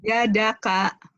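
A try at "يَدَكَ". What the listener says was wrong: Iya, bagus.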